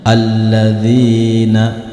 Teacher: maka Hamzah washal di sini dibaca berharakat fathah · Berarti kalau huruf lam yang pertama berharokat sukun, maka hamzah wasol ini bertemu dengan huruf lam yang berharokat sukun. Maka jika hamzah wasol bertemu dengan huruf lam berharokat sukun, maka hamzah wasol di sini dibaca berharokat fathah. Berarti cara membacanya alladzina, bukan ulladzina atau illadzina, melainkan alladzina.